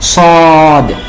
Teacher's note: সদটা আগে আমরা বললাম সদ অসাউন্ড হবে, 4 আলিফ টান হবে, এবং শেষে দাল সাকিন উচ্চারণ আসার কারণে ধাক্কা হবে